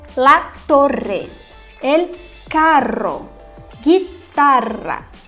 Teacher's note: a gente vai ter o RR, que é ainda mais duro o som, ainda mais vibrante